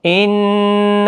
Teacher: ان نون مشدد پر غنہ ہوگا